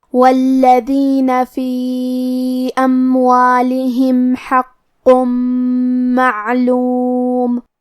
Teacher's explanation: کلمت والذین کیونکہ لام پہ تشدید ہے لہذا ہم یہ حرف کو 2 حرف کے برابر پڑھیں گے کیونکہ تشدید کی اصلیت 2 حرف ہے.